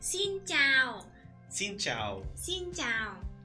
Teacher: So it's flat tone down. And down.